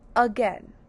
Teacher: a in the beginning making a schwa sound